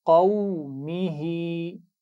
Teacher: ہا کے نیچے کھڑا زیر ہے، صرف اسی کی آواز کو کھینچنا ہے · صرف ہا کو، میم کو نہیں کھینچنا